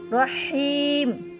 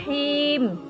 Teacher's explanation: হিমে কিন্তু তিন আলিফ টান লম্বা হলকের মাঝ থেকে সস শব্দ করে